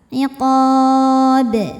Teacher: Huruf ba-nya qalqalah kubra karena sukunnya tidak asli melainkan sukun karena berhenti, maka dibacanya dipantulkan dengan pantulan yang besar.